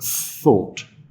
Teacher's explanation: If you put your hand here and you say the word thought, you will realize that there is no vibration at all at the beginning of the word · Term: unvoiced sound